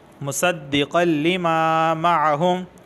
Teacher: وَهُوَ الْحَقُّ وَهُوَ الْحَقُّ مُصَدِّقًا لِمَا، تنوین کے بعد لام آیا ہے اور لام حروف یرملون میں سے ہے، تو یہاں پر صرف ادغام ہوگا، گنہ نہیں ہوگا